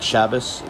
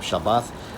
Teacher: in Yiddish, the tha becomes an S phoneme, hence words like Shabbos, instead of Shabbat, or what is now called Shabbat in modern Israeli Hebrew.